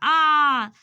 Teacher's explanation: उसको बोलने में हमारा मुख ज़्यादा खुलता है और समय भी ज़्यादा लगता है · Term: विवृत